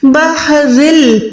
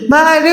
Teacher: تنوین کے بعد لام آئے گا تو یہاں پر آپ نے آواز کو ناک میں بالکل نہیں لے جانا۔ بحرل، بحر ایسے ہم نہیں پڑھ سکتے، ٹھیک ہے، یہاں پر ہم نے گننا نہیں کرنا۔ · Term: ادغام بغیر گننے والا